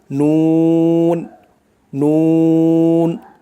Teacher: জিহ্বার আগা তার বরাবর উপরের তালুর সঙ্গে লাগাইয়া উচ্চারণ হয়